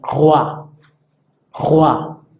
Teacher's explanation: Luego tenemos la combinación oi, que suena gua